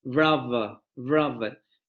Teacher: esa dental fricativa sonora se va a adelantar y se va a pronunciar con la labiodental fricativa sonora.